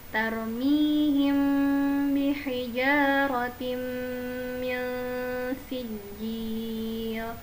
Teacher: Kita berfokus pada mim bertemu dengan huruf ba. Ketika ada mim depannya huruf ba, maka mim sukun depannya huruf ba, teman-teman harus menahannya selama 3 harokat.